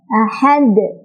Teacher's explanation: Karena dal sukun itu adalah huruf qalqalah, maka dia cara bacanya adalah dipantulkan dan pantulannya besar ya. Ahad, besar pantulannya. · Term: qalqalah kubra